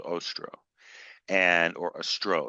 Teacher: They have pronounced it on the second syllable.